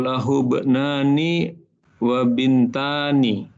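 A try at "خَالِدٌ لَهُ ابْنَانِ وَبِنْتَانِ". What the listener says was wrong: Masya Allah, mumtaz.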